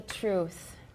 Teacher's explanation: for truth we can have aspiration and voicelessness